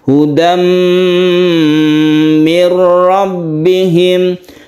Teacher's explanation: Idgham artinya masuk ke huruf mim sehingga timbullah tasydid mim.